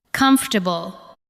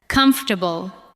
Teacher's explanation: Do not give every syllable the same weight. Let the first part carry the stress.